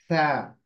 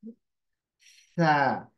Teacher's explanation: जबान की नोक ऊपर के दांत के किनारे को लगेगी, तो सा की आवाज आएगी। सा, हवा बाहर निकलेगी।